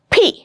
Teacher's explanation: It's coming out with a burst. It is released suddenly.